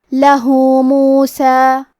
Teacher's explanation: کلمت لہو میں آخری میں ہا پہ الٹا پیش ہے. یہاں حکم ہے مد صلہ صغرا. ہم اپنی آواز 2 مد کے برابر لمبی کریں گے